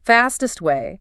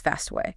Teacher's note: Notice how the T in fastest almost disappears when it runs into the W of way.